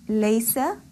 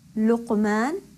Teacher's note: In all these words, I'm sure you could hear the light, soft and sweet quality of the lam.